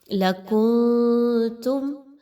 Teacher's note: آواز کو ناک میں لے کر جانا، اور کیونکہ اخفا ہے تو اس لیے نون کی آواز کو کلیئر نہیں پڑھنا